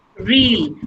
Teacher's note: र की sound आएगी क्योंकि R के बाद vowel sounds हैं. Real. अब यहाँ पे र की sound बहुत strong हो जाएगी.